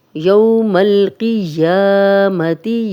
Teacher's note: یا کھڑا زبر ہے، دو حرکات لمبا کریں گے